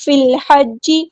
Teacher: فا کو ہم لام کے ساتھ ملا دیں گے، حمزۃ الوصل ہمارا ڈراپ ہو جائے گا